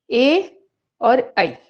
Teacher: ए और ऐ, इसका उच्चारण स्थान क्या हो गया? कंठ तालु।